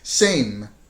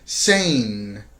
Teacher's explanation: for the m your of course your lips are tight together and it's not a very resonant consonant so you have to do it quickly same as opposed to the more resonant in sound sane can be longer